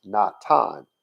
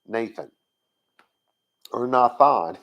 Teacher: There was never supposed to be a TH sound, because in Hebrew, there never has been, nor is there now, a TH sound.